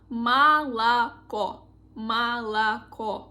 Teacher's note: First and second letters we pronounce like A sounds, and the last sound is O.